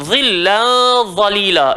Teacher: dua-dua kena gigit lidah. Dha kena tebal, tanwin bertemu dha, hukum dia adalah ikhfa, so kena dengung.